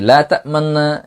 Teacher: আর রোম হচ্ছে এই লা তা'মান্না, এটা নুনটাকে সাকিন না করে, এখানে ইদগাম না করে, বরং মূল যে পেশটা ছিল এই পেশটাকে সামান্য অর্থাৎ অর্ধেক উচ্চারণ করা